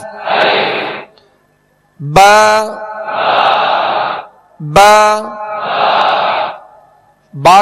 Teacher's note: बा बा का जो मखरज है, मखारज की लिस्ट में आप देखेंगे कि दोनों होंठों के तर हिस्से से बा अदा होता है। इसको बा यानी खुश्क हिस्से से अदा नहीं करेंगे, बल्कि बा नरम जो इसका वो तर हिस्सा है दोनों होंठों का, इससे बा अदा होता है।